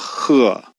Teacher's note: some Chinese will make the H sound a little bit harsher than we do in English. Standard would say that it goes just like it does in English, h.